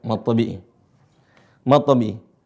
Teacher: harakatnya adalah dua harakat dua ketukan enggak usah panjang-panjang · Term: Mad thii